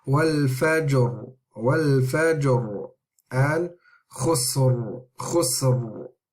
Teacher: so you can hear there's a tafkhim on the ra.